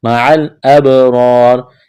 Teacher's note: یہاں با ساکن ہے، با پر قلقلہ کریں گے، را کے اوپر زبر ہے تو را کو موٹا کرنا ہے، الف سے پہلے زبر ہے، الف مدہ ہے، ایک الف کے برابر کھینچنا ہے.